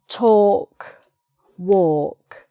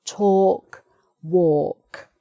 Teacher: talk, it's a sort of or sound, which is not suggested by the spelling at all